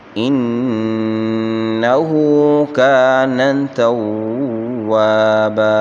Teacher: انه نون مشدد ہے، اس کو ایک الف کی مقدار اس میں غنہ کریں گے، ہا کے اوپر الٹا پیش ہے، اس کو ایک الف کی مقدار یعنی 1 سیکنڈ کھینچ کر پڑھیں گے۔ کان الف مدہ ہے اور اس کو ایک الف کی مقدار کھینچیں گے۔ · کان الف مدہ ہے اور اس کو ایک الف کی مقدار کھینچیں گے۔ توابن واو کے بعد الف مدہ ہے، اس کو ایک الف کی مقدار کھینچ کر پڑھیں گے، اور با کے اوپر تنوین ہے اور تنوین وقف کی حالت میں الف سے بدل جائے گی، تو اس کو یوں پڑھیں گے انہ کان توابا۔